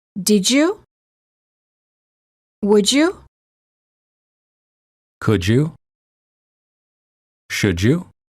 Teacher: d plus y is usually pronounced as j as in joke